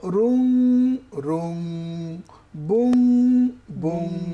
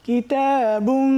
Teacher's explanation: দুই পেশের ভিতরে একটা গোপন নুন আছে যেটা আমরা পড়বো